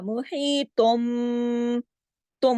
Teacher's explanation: इसलिए कि जब भी तनवीन या फिर नून साकिन, दोनों हालतों के फौरन बाद बा आ जाए, जैसा इसमें बिल काफिरीन का बा आ गया, इस बा की वजह से ये ता दो पेश तुन की जो आवाज है, तुन में नून की आवाज खत्म होके मीम की आवाज हो जाएगी, तुन नहीं रहेगा, तुम हो जाएगा। मुही तुम हो जाएगा, ठीक है। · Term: इकलाब का कायदा